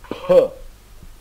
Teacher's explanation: Esse é o P de pato com muito ar